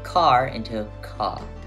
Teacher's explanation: the Boston accent is famous for dropping the r sound